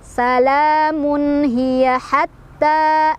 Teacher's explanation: Salamun ada izhar karena tanwin dhammah bertemu dengan ha, bacanya jelas. Salamun hiya hatta, ditekan. · Salamun hiya hatta, ditekan. Ta mad tabi'i karena ada fathah berdiri ya di atas huruf ta, dibacanya panjang 2 harokat